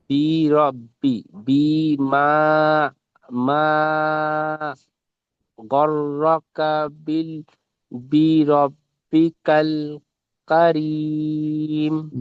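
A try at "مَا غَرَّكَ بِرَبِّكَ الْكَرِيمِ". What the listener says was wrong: জি, মাশাআল্লাহ, খুব সুন্দর পড়েছেন।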